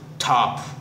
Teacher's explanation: When you say top, it means your mouth will give puff. It will puff up. It will give plosive sound, plosive voice.